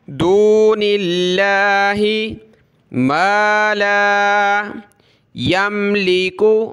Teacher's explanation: لفظ اللہ سے پہلے نون پر زیر ہے، لفظ اللہ کو باریک کیا